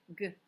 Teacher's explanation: the last sound is good like gate on our keywords it's that back kicker and it's voiced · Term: g sound